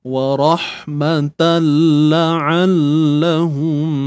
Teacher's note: idgham Bila Ghunnah Kamil idgham Bila Ghunnah kamilah masuk tanpa dengung yang sempurna